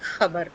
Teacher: You hear a short crack after you say the word kh, like khabar type, khabar, right? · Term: pharyngeal sound